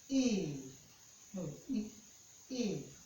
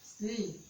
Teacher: the front of your tongue is raised towards the roof of your mouth. Your mouth is open and your lips are spread. To pronounce the sound E, E, the front of the tongue, the front of the tongue is raised towards the roof.